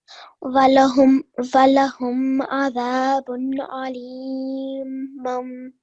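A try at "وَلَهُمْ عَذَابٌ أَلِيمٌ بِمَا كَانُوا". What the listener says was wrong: Yes, but look, you need to join it with the ba. So you did well, you did mum, but remember, sit on it for 2 seconds. Alimum bima kanu.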